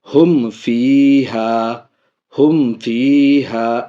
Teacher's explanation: دیکھیے یہاں پہ فا آ رہا ہے، اس لیے یہاں پہ ناک میں آواز نہیں جائے گی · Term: اظہار شفوی